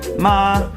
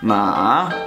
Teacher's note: Okay, in Chinese there are 5 different tones. It's the straight one, it's the one that goes up, it's one that goes down and up, and then there is one that just goes down. Then the last one is no tone.